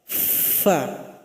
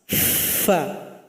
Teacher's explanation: dari bibir bawah bergabung dengan ujung gigi seri atas. Tempelkan ujung gigi sini ke bibir bawah. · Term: huruf fa